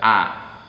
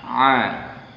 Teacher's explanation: Harus dibedakan ain dan alif. Kalau alif maka mulutnya agak lebar, a. Ain ditekan, a. · Makhrajnya ain ada di tenggorokan, sedikit ditekan.